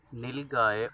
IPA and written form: ˈnɪlˌɡaɪ (nilgai)